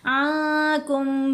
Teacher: عنکم نہیں پڑھا، نون ساکن کے بعد کیف، نون ساکن کا احفا، نون کو ناک میں چھپا لیا